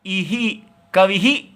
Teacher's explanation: इ के बाद आएगा तो तालव्य हो जाएगा। तालु से बोला जाएगा।